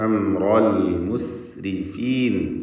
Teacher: അംറ എന്നതിലെ സക്കിനത്തെ മീമിനെ ഇൽഹാർ ഷഫഈ നൽകി മണിക്കാതെ വെളിവാക്കണം. റാഇന് തഫ്ഖീം കൊടുക്കുക.